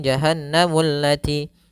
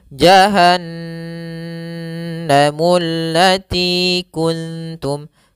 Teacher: cara membacanya yaitu suara n-nya ditahan atau suara mnya ditahan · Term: ghunah